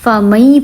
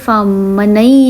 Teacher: نون ساکن کی آواز سائلنٹ ہو جائے گی، میم یا سے ملے گا